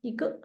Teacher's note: Initially, it's a falling tone, but it's in between of two words. So you just say neutral tone. 一个 light and short.